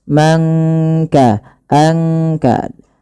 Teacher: tidak kita baca man kasaba, tapi disamarkan suara nunnya kepada huruf kaf. Mangka, angka, langsung kepada makhraj daripada huruf kaf itu sendiri. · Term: ikhfa